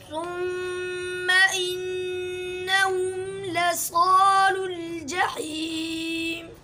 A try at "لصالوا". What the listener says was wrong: स्वाद को मोटा पढ़ना है और इसके साथ जो अलिफ है वो भी मोटा होगा, लसालुल, लसालुल,